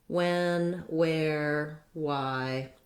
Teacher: we just now say the w sound rather than the wh sound. So we used to have WH to represent a sound wh, which was actually the reverse.